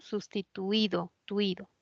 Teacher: Y hay un diptongo homogéneo. Tui es homogéneo. La U y la I no se separan.